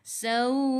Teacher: Matikan dengan huruf hamzah, tahan nafas.